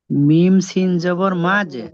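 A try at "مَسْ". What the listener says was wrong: মাস, মাঝ নয়, মাস, মাস, মাঝ বলছেন কেন? মাঝ নয়, মাঝ নয়, মাস, মাস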